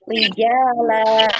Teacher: Dibaca hilang tanwinnya, kemudian dipanjangkan 2 harokat ya.